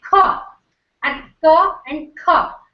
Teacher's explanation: So in Mahaprana, what happens is an extra puff of air is added to the release. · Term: aspirated consonant